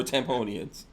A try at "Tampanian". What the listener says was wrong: Tampanian. Tampanian. There's no O at the end of Tampa. It's not Tampa.